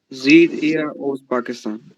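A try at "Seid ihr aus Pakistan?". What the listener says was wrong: जीत नहीं है, ई आई को जमा में आई कहते, जब इकट्ठा आ जाए तो क्या। जीत नहीं, जायद जायद।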